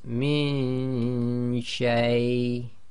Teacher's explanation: So on the left we do the nasalization in the nose. but our tongue is not going to where we'd normally put it for noon. We already have it in the position for the sheen on the right. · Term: Ikhfaa